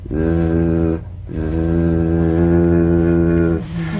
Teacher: The tip in gentle contact with the hard palate.